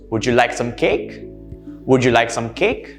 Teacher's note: So for all questions which expect a yes or a no answer, you would raise your pitch or your intonation towards the end